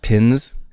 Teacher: So Texans might not distinguish pens and pins.